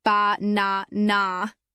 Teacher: in the word banana, the middle syllable is stressed.